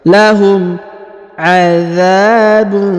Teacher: huruf dha dipanjangkan 2 harokat karena di depannya terdapat alif.